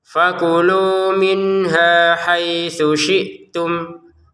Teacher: Fakulu minha haitsu syi'tum. Ha 2 harokat, haitsu tidak ada panjang, langsung ke shin ya. Haitsu syi'tum, perhatikan di sini sa, di sini shin, harus beda.